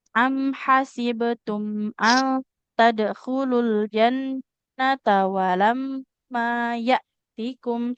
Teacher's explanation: ang tadkhulul jannata nunnya fathah, nggak ada alif, nggak boleh panjang.